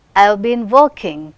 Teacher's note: auxiliary verbs, they do not receive stress, working is receiving stress.